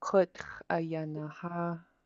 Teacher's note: you're stopping the air in your throat, just like when you say uh-oh, that little stop in the middle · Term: glottal stop